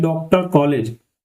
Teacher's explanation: इसके लिए हम अर्ध चंदु का प्रयोग करते हैं एक अर्ध चंदा का। और ये जो आ होती है ये ए और ओ के बीच की ध्वनि होती है